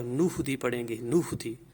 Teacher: یہ حمزہ گر جائے گا، اور پیچھے والا جو نون ہے وہ اس کے ساتھ مل جائے گا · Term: حمزہ وصلی